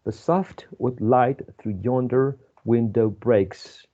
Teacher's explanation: pentameter ten syllables with five unstressed and five stressed syllables